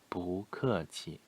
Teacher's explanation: 小事，小事。不谢，不用谢 or 小事 or in this formal form 不客气。不 no, not 不 the fourth tone originally is fourth tone, but before another fourth tone like 不客气 the fourth tone of 不 is going to be changed into second tone 不客气 not 不客气.